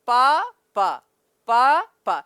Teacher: पापा शब्द अगर आप बोलेंगे तो ये दोनों ओठ 2 बार स्पर्श करेंगे।